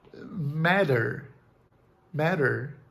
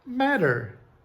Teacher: o T ou o D, depois de uma vogal e antes da letra R, eles são produzidos exatamente da mesma maneira. Exemplo, matter, matter, na categoria flap.